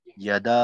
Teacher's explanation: ইয়াদা, ইয়াটা কিন্তু কোনোভাবেই লম্বা করা যাবে না।